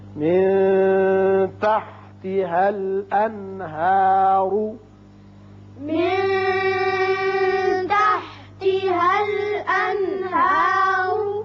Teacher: یہاں نون پر چونکہ بعد میں ہا آ گیا اظہار ہوگا